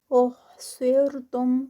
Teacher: صاد heavy را light. فَمَا اسْتَيْسَرَ را پھر ہیوی ہوگا زبر کے ساتھ ہے.